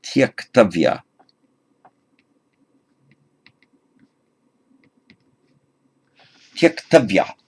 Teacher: So we have tyaj, to abandon, plus tavya, a j followed by the suffix t, that has to become a k, so that's why it becomes tyaktavya.